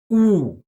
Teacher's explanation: In the German U, the tongue is super attracted, the lips are rounded so much they're almost touching and the sound itself is very monotone